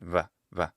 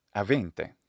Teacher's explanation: when it's between vowels, it will become a voiced bilabial approximate that is av sound vv.